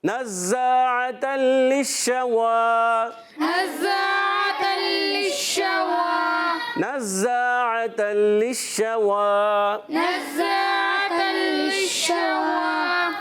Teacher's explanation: واو پر کھڑا زبر ایک الف کھینچ کر ادا کریں گے